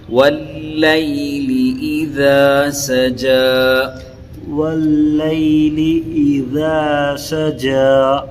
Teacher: ہاں، اذا سجا، اذا پڑھے تو پھر سین میں یہ نہیں ہو رہا ہے، تو سین جو ہے نارمل ہے اور ذال جو ہے بالکل باریک پڑھنا، زبان کی نوک سے ادا کرنا۔